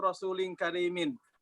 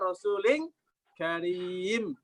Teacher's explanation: Kalau Quran bacanya rasulin karim. Dia berhentinya di mim, bukan di tanwin. Namanya al-waqfu bil haduf.